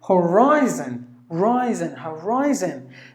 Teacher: in this word horizon, rise should be given more volume. Sorry, including the I.